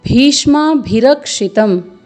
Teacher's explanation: भ में दीर्घ स्वर है, अधिक समय देना है। फिर अर्धवर्ण मूर्धन्य श का है।